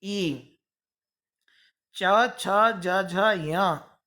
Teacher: इनका उच्चारण स्थान तालु है, इसलिए ये सभी वर्ण कहलाएंगे तालव्य। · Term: तालव्य वर्ण